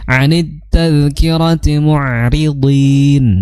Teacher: Ri-nya itu ro yang tarqiq atau ro tipis, jangan tebal ya, jangan anit tadhkirati tapi ri anit tadhkirati mu'ri seperti itu.